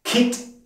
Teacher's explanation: Kit im hohen Ton ausgesprochen, da es hier eine tote Endung gibt.